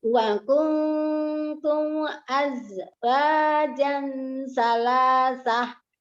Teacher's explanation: mim sukunnya bertemu dengan alifnya izhar ya, tidak ditahan